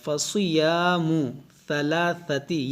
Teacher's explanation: دیکھیے فصی سواد کو موٹا کریں گے، فصیام ثلاثتی، یہ ثا ہے، یہ سین نہیں ہے کہ ثلاثتی، بلکہ ثا نرمی سے، ثلاثتی ایام.